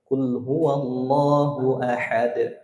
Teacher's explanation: Dot bukan qalqalah. Yang qalqalah itu dal ya. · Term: dal qalqalah